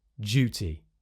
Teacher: d, y in duty becomes j, duty in modern RP most of the time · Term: Yod Coalescence